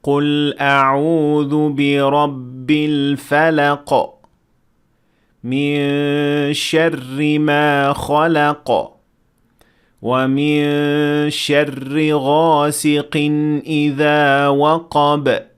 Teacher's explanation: آپ یقینی طور پر سن سکتے ہیں کہ ہر بار جب میں ایک آیت کے آخر میں رکا تو ایک واضح قلقلہ ہوا، کیونکہ ہر آیت کا اختتام قلقلہ کے حرف پر ہوا تھا۔ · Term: قلقلہ کبریٰ